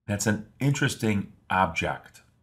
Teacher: Depending on how you pronounce this word, it can have a few very different meanings. When the stress or accent is placed on the first syllable, the word object refers to a thing.